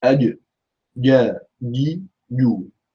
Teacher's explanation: The jim in Arabic is a very strong letter. It has shidda, it has qalqala. It does not have rakhawa or hams or tafashi or any weak characteristics.